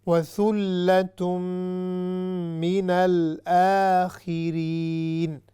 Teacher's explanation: یہی وہی ہے وَثُلَّةٌ ثا شدہ جو لام پر آ رہی ہے، اس کے بعد پھر غنہ بھی ہو رہا ہے، اور پھر آخر میں مد عارض للسکون جس کو ہم نے 3 سیکنڈ تک بھی کہہ سکتے ہیں